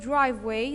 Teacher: in the word driveway, the first syllable is a stressed syllable, while the second syllable is not stressed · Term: stress on the first syllable